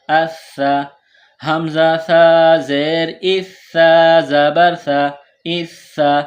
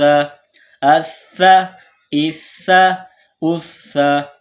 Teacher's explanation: سا کو نرم پڑھیں گے، زبان تھوڑی باہر نکالیں گے سا کو پڑھتے وقت